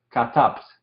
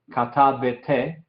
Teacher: el Shewa al final de la palabra es silencioso también · No es katabete, no es katabte, es katabt. No hay ningún sonido del Shewa que está en esta palabra.